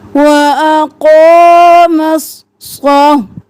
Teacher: صا اور لا کو ایک الف کے برابر کھینچنا ہے